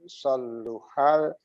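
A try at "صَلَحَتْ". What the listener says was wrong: Jangan ditasdid. Saluhat. Saluhal jasadu kullu.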